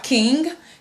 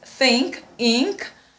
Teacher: we have the velar nasal sound, which is ng